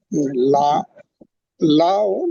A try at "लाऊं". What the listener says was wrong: नून गुन्ना लगा दीजिए, लाओ पढ़ते हैं तो लाओ पढ़ लीजिए, नून गुन्ना है तो।